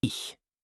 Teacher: It's like the sound in the Scottish word lach. Not a hard K, not a hard C. A soft, breathy ch. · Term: the ch sound